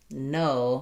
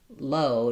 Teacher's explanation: If I say no, my whole tongue seals off. If I say low, just the tip goes up.